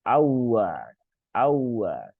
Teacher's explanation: Terus di sini, nah ini juga banyak yang keliru di sini. Banyak sekali yang membaca di sini itu wawunya dibaca panjang.